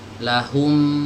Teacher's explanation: Jadi dikembalikan ke posisi mim semula ya. Posisi mim semula itu ya mingkem biasa, lahum, seperti ini, dirapatkan tanpa dimonyongkan ya. Jadi ini yang disebut dengan ad-dhamm wal irja, proses maju mundur.